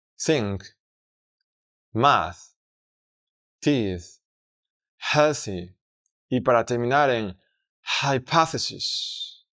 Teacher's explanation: en este sonido no añadimos sonoridad vibrando las cuerdas vocales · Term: voiceless th sound